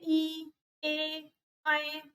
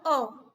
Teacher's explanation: अग्रस्वर उन स्वरों को कहते हैं जो आगे जीभ के आगे वाले पार्ट से बोले जाते हैं।